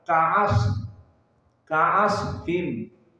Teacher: sifatnya adalah rakhawah dan juga hams sehingga harus ada nafas yang keluar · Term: Shad yang sakinah